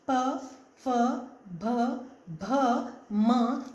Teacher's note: होंठ आपस में मिलकर उसको बोलते हैं